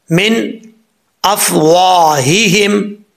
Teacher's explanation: اب یہاں پر واؤ کے آگے الف ہے, ایک الف کی مقدار لمبا کریں گے. ہا کے نیچے زیر ہے, ہا بھاری ساؤنڈ کے ساتھ پڑھا جائے گا کیونکہ اس کا تعلق اس حلق سے ہے جو سینے کی طرف ہے. · خا حروف مستعلیٰ میں سے ہے, پر پڑھا جائے گا, را کے اوپر پیش را پر پڑھا جائے گا.